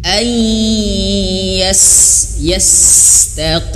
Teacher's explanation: nun mati bertemu huruf ya, masuk ya, masuk hidung ya, ditahan gunah